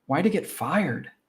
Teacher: because he ends in a vowel sound and then get starts with a consonant sound, we push all four words together